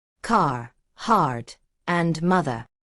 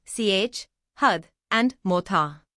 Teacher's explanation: Americans pronounce the R sound clearly at the end of words and syllables. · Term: rhoticity